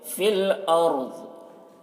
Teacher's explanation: را کو پر پڑھیں گے یہاں پر کیونکہ رائے ساکنہ سے پہلے زبر ہے، اور ضاد کو بھی پر پڑھیں گے۔